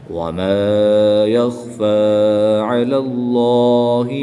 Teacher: جلالت اللہ عز و جل کے لام سے پہلے حرف پر زبر ہے، اس لیے اس لام کو پر یعنی موٹا پڑھیں گے